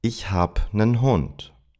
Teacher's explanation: The of habe disappears, and instead of einen, I said nen.